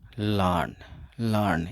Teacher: इसमें आर को साइलेंट रखेंगे, आर इसमें ड्रॉप हो जाएगा।